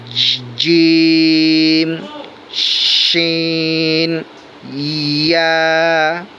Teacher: 6 number মাখরাজ জিহ্বার মধ্যখান তার বরাবর উপরে তালুর সঙ্গে লাগাইয়া জিম শিন ইয়া। একটু শক্ত মাখরাজ, হরফগুলো একটু শক্ত, একটু পরিশ্রম হবে।